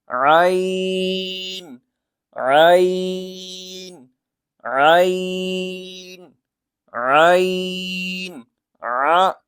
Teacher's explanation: ऐन भी वहीं से निकलता है जहां से हा निकलता है यानी कि हलक का दरमियान हिस्सा